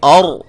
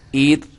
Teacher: یہ جب میں نے اور کہا تو را کو موٹا کیا، ایر کہا تو را کو باریک کیا، اور کہا تو را کو موٹا کیا۔